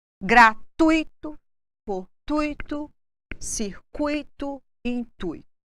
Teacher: tônico no tom de voz recairá na primeira vogal que é o u · Ditongos decrescentes. Portanto, estes devem ser pronunciados de uma só vez.